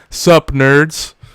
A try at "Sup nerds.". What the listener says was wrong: Question mark? You don't have to question it. You have to say it as a statement.